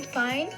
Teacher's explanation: we tend not to complete the word. So the end of the word is probably just dropped.